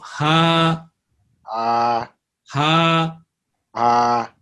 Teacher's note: Ha coming from the bottom point of the throat, connected to the chest, that point. You know, there is a pointing and there is a soft skin there, you know, when it is connected to the bones of chest, the body.